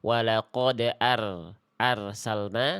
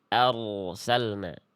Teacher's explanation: ro sukun jangan sampai dibaca tipis ketika diawali oleh huruf berharakat fathah. Harus tebal.